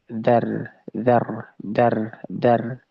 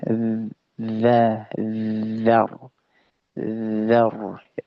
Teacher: za makronya adalah di ujung lidah, ya, mengarah ke ujung gigi seri atas.